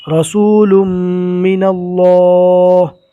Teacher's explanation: میم مشدد کا ایک الف کے برابر گنہ کریں گے اور اللہ کا لام پور پڑھیں گے